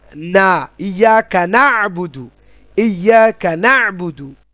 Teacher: দন্তনয়ের মতো উচ্চারণ, মানে নাক দিয়ে উচ্চারিত হবে, জিহ্বার আগা উপরের দাঁতের মাড়ির গোড়া থেকে একটু উপরে